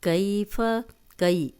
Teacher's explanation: کئی یا جزم والی پیچھے زبر، تو نرمی سے بغیر کھینچے پڑھیں گے